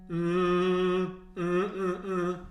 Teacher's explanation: move that tip of the tongue farther back in the top of the mouth so you're on the hard palate and not on the alveolar ridge by the front teeth